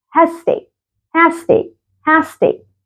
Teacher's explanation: حط الاس دي والاس دي خليهم اس واحده بس